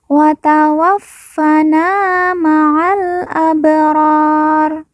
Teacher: na kita baca panjang 2 harokat karena di depannya terdapat alif yang merupakan tanda baca panjang 2 harokat.